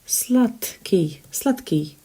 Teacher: you can see d in there but it's pronounced as ta simply because k impacts the previous letter letter d